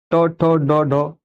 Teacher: जब हम ट बोल रहे हैं तो तालू से थोड़ा ऊपर लग रही है जीभ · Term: मूर्धन्य